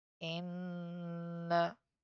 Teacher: This is known mushaddad, so we need to take the sound into our nose.